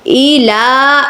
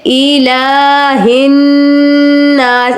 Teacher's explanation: لام کو آپ 2 الف کے برابر کھینچیں گے. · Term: کھڑا زبر